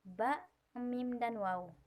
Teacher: bunyi yang dihasilkan dengan cara mempertemukan antara bibir atas dengan bibir bawah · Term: bunyi bilabial